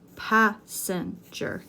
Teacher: three syllables stress the first syllable